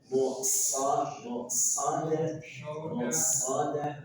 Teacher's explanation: Stopnya punya sifat sofir dan tebalkan.